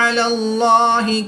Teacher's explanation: अल्लाह अज़्ज़ा वजल के लाम से पहले हर्फ पर ज़बर है, तो इसलिए इस लाम को पुर यानी मोटा पढ़ेंगे।